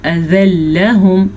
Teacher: تنوین کا جو نون تنوین ہے وہ ختم ہو جائے گا